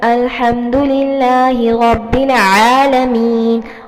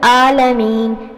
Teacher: اور جب عین پڑھتے ہیں تو اس میں اسکویز ہوتا ہے